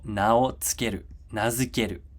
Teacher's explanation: These little dots here, dakuten, which tells us that this goes from an unvoiced consonant to a voiced consonant